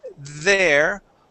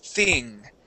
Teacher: putting your tongue between your teeth and either pronouncing a voiced th like there or an unvoiced like thing